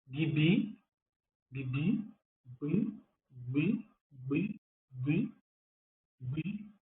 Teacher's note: O G fica aqui travado lá atrás com a língua dentro da boca